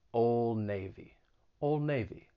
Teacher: elision another pretty well-known american brand old navy in this case the d is going to get removed because once again it comes between two consonant sounds